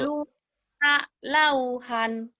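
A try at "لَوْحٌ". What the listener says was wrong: Luha, lauhun. Ada hunnya. Luha, lauhun.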